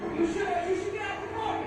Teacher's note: the way of pronouncing car in American way, which is with the r sound